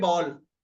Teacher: ये आ के और ओ के बीच की ध्वनि है